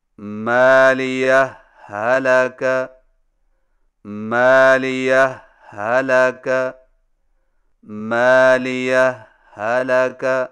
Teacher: پہلی ہا پر معمولی سا وقفہ کر کے لفظ ہلاکہ کی ہا کو بغیر تشدید کے پڑھیں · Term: اظہار